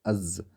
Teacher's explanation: دونوں دانت ملا کر اس کا مخرج بنتا ہے